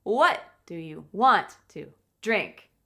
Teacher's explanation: We stress the question word, what, and we stress the verbs a bit, want and drink, and everything else becomes smaller, faster, and it's more difficult to hear.